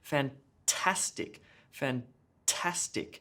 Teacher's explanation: emphasis on the middle syllable